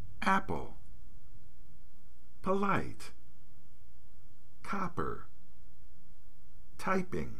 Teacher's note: when the p is at the beginning of an unstressed syllable, we use the unaspirated allophone of p.